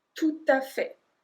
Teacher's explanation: And we link tout et à